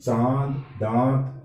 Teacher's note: तो एक चंद्र बोलते हैं तो न की ध्वनि है, नासिक के वर्ण है वो पूरी नाक से निकल जाती है, जबकि चांद दांत ये बोलते हैं तो नासिक की ध्वनि हल्की पड़ जाती है और श्वास वायु नाक और मुंह दोनों से निकल जाती है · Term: चंद्र बिंदु